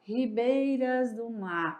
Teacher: mar é a última sílaba e é forte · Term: sílaba tônica